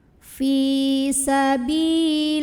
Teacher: Kemudian ada alif lam, namanya alif lam syamsiyah karena ada alif lam yang bertemu dengan huruf syamsiyah yaitu lam. Maka alif lam ini nggak perlu dibaca, dari li langsung masukkan ke lam